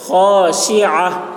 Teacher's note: شین کی آواز سخت سیٹی کی جیسی ہوگی